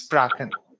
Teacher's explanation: And after A, CH will be getting K sound.